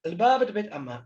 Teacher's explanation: the Ein was not pronounced as the pharyngeal. It had completely merged with Aleph in, or been elided in this dialect, as indeed it seems it had in Jewish Babylonian Aramaic.